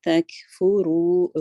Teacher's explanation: رو 2 count جائے گا, را heavy ہے